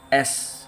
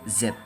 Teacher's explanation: Tangan di leher diam Z bergetar